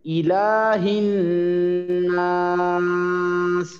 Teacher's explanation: ওয়াজিব গুন্নাটা ঠিক মতো করবেন, হ্যাঁ স্পষ্ট করে গুন্না করবেন, অস্পষ্ট করে অনুষ্কারের মতো না